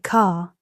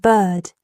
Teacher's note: Sounds of American English are controlled vowels. Practice sounds like car, with a stronger R at the end, and bird. The R blends with the vowel.